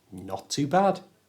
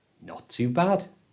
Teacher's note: because not ends in a T and to starts with a T, we don't pronounce the T on the end of not.